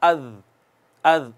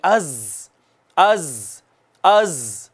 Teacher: मिसाल के तौर पर ज़ा है ना, इसको यूं नहीं पढ़ना अज़, अज़, नहीं नहीं नहीं नहीं, इसको जोर लगाना है और सीटी लगानी है उसमें